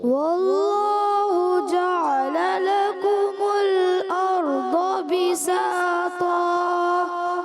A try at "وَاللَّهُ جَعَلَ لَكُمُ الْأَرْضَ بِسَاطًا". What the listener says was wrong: اچھا جعل جو ہے نا، جعل ایسے لگتا ہے عین جو ہے نا آپ کا ساکن ہو رہا ہے، ساکن نہ کرو، عین کی زبر کلیئر کریں۔ واللہ جعل لکم الارض بساطا عین پہ آ کر آپ تھوڑا کمزور پڑھتے ہیں.